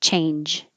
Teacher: you won't hear the d at the end unless there's a vowel after it